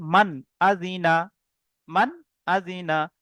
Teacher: নুন সাকিনের পরে হামজা এসছে, নুন সাকিনকে বিনা গুণনায় তাড়াতাড়ি পড়তে হবে।